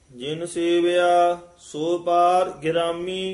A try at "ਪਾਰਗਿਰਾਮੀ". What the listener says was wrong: ਇਕੱਠਾ ਹੀ ਪਾਠ ਹੈ, ਪਾਰਗ੍ਰਾਮੀ।